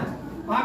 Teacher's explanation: आ उच्चारण स्थान कंठ है